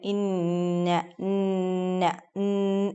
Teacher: ഇൻ എന്ന് പറയുമ്പോൾ മൂക്കിലേക്കാണ് അതിന്റെ ഒരു സ്ഥലം പോകുന്നത്